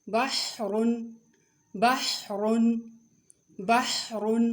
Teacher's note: ح کی آواز درمیانی حلق سے رگڑ کھا کر نکلتی ہے